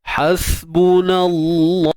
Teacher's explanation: Kalimah Allah kita baca dengan tebal sebab sebelumnya baris atas. Hasbunallah, tebal kalimah Allah, taghlidh.